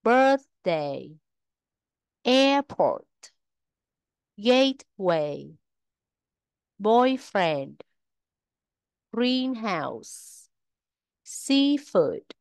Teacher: danh từ ghép trọng âm thường rơi vào âm tiết thứ nhất